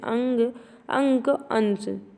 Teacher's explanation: अनुस्वार के उच्चारण में नाक से अधिक सांस निकलती है और मुख से कम, जैसे अंग, अंक, अंश।